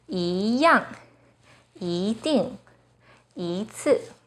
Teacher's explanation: When 一 is followed by a 4th tone, it changes to the 2nd tone